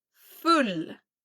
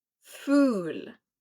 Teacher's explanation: in the first one, the U is shorter. In the second one, it's longer.